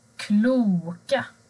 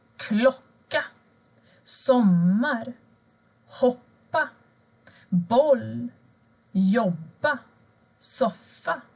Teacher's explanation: Men blir ljudet kort, alltså när du har två konsonanter efter vokalen, då ändras ljudet till å. Till exempel klocka, sommar, hoppa, boll, jobba, soffa.